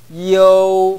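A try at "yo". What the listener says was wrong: 지금 요 했죠? 이, 어, 우. 요. 어, 우가 너무 강했어요. 어가 가장 강해야 됩니다. 왜냐하면 어가 이, 어, 우 가운데 어가 입을 가장 많이 벌리는 음입니다. 그러니까 어가 강해야 됩니다. 요.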